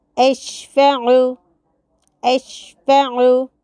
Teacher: शीन को कलकला करने से बचना है, आइन को मद बनाने से बचाना है।